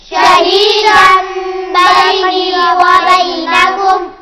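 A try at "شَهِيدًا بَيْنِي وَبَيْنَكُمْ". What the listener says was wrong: बैनी लंबा होगा थोड़ा सा। बैनी व बैनकुम। शहीदन बैनी व बैनकुम।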